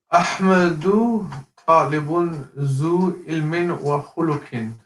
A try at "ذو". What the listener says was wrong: Try to avoid saying zoo. There's no Z sound. Yeah. It's thu. So you stick your tongue out a little bit in front of your teeth. Some air comes out, and it's more like a TH than a Z. أيوة أحمد طالب ذو علم وخلق.